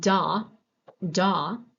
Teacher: in voice onset time so if we look at da da my vocal cords start vibrating at about 17 milliseconds when I'm saying da